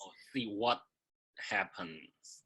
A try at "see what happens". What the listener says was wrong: Mm-hmm. So you have to position for the T still, and you have to get your voice turned off there. So your listener knows there's a voiceless sound right here. Yeah, you have to stop.